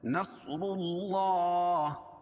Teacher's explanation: کھڑا زبر قائم مقام الف مدہ کے، اس کو ایک الف کے برابر کھینچ کے پڑھیں گے